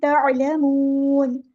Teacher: ऐन को हमने मुस्तह हलक से अदा करना है · नून को हम वक़्फ़ करते हुए साकिन कर देंगे और यहाँ पे मद आरिज़ होगी।